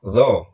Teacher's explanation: lo itu makrotnya kan ujung lidah keluar sedikit menempel di gigi seri atas